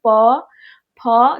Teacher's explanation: दोनों ओठ जो है आपस में सट रहे हैं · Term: ओष्ठ